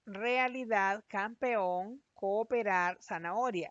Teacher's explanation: todas las vocales que están juntas han sido separadas en sílabas diferentes